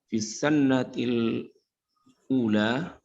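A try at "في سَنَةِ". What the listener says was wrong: Afan, fi sanah. Laisa hunaka madza syiddah fil nun. Fi sanah. Fi sanati nggak ada tasdidnya. Di nunnya nggak ada tasdid. Di sinnya ada tasdid, tapi karena ini kan untuk apa?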